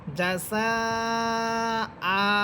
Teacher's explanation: অর্থাৎ আমরা যদি হামজার উপরে থেমে যাই তখন আমরা পড়ব জাসা আ, একালিপ টেনে পড়ব